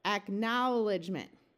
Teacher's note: let's switch from the long o sound of o w to the ow sound